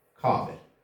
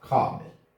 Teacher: Gördüyünüz kimi sözdə bir sınma var, kabel. Deməli, vurğu birinci hecadadır.